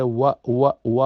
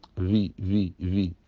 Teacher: अरबी में सिर्फ वाव है व व गोल होट करके निकालना है